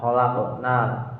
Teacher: qafnya berharokat sukun asli, tidak karena waqaf, merupakan bacaan qalqalah sugro